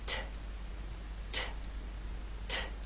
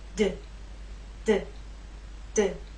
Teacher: These 2 consonant sounds are made basically the same way, but T is quiet, it's unvoiced, and D is voiced. So you'll feel no vibrations when you make the true T sound. · There is more air released. There's a puff, a strong puff with the T. That strong puff is not present with the D.